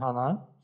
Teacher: o acento continua, o tom, né, continua como alto, não há uma queda, por isso plano. Já no segundo exemplo, onde tem flor, né, hana, o acento ele apresenta uma queda no final. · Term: padrão plano